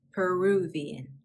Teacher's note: We inserted a V after Peru.